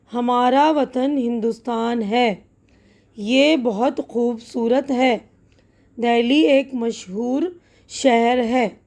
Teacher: بیچ میں اور شروع میں جب آواز آ رہی تو ہ کی آ رہی، آخر میں زیادہ تر آواز جو ہے واول کی یعنی آ ساؤنڈ کی ہو رہی ہے